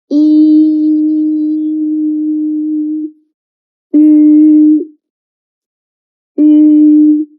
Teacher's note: When pronouncing U, you can pronounce E first, and then let the tongue stay. Just change your lips shape to a very small circle.